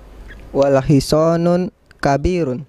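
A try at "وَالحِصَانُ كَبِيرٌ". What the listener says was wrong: Wal hisonun. Ayo, kita sudah belajar ada alif lam. tanwinnya hilang. Bukan dibaca wal hisonun, tapi wal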